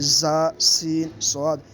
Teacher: ان کو سیٹی تیز آواز کی طرح نکال کے پڑھتے ہیں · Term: حروف صفیریہ